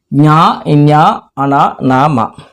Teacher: ముక్కు సహాయంతో పలికేటువంటి అక్షరాలు కాబట్టి అనునాసికములు అని చెప్పడం జరుగుతుంది